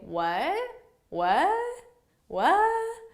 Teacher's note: I want it to sound like what. So you need to have that rising intonation to show that it's a question. And generally, native English speakers, we don't pronounce the final T in this.